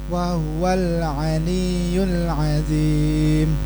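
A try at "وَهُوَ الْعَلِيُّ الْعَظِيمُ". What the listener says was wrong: Lihat saya, bukan azim, azim maka jadi dal. Harusnya azim, azim. Ditebalkan, diangkat lidahnya.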